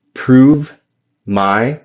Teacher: But yeah, I would just do a V sound. No additional vowel at the end of improve. And then go directly from that V to the M in my.